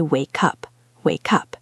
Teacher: We take the K and we make it the start of the next word. Instead of wake up, we say wake up, wake up.